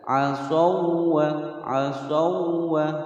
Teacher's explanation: Mat tabi'i 'asaw, di sini ada lain wawu sukun sebelumnya fathah. Kemudian huruf wawu ini ditekan saja, tidak boleh digunnahkan